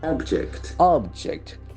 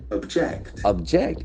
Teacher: are a noun and a verb the pronunciation will be different if it is a noun the accent falls on the first syllable